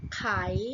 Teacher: แต่ว่าอันที่ไม่มีวรรณยุกต์จะตรงกับเสียงจัตวานะคะ